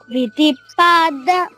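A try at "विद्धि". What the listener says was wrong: అది విధి కాదమ్మా, విద్ధి. విద్ధి అంటే తెలుసుకోని బాగా వినాలి. విధి కాదు, విద్ధి.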